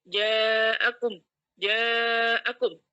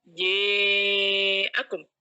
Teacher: itu kita membaca riwayat Hisyam terlebih dahulu dengan membaca fathah tanpa diimalah · Kalau Hisyam membacanya itu biduni imalah atau tanpa imalah alias fathah aja, biasa aja.